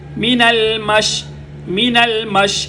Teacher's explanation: منہ کا جو درمیانی حصہ ہے خالی وہاں سے شین